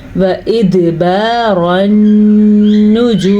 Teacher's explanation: دال پہ کلکلا ہو رہا ہے کیونکہ دال پہ ساکن ہے